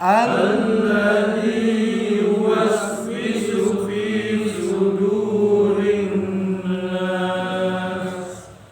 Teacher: ingat bahwa nun yang bertasdid harus ditahan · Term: gunnah musyaddadah